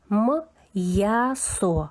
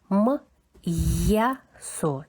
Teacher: М у нас твердий і приголосний. Потім після апострофа завжди чується йотований звук я.